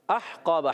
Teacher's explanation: اور احقابا، حمزہ کو ہا سے ملائیں گے، یہ الف نہیں حمزہ ہے، احقابا، ہا حلق کے درمیان والے حصے سے